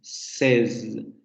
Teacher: La primera S no hay vibración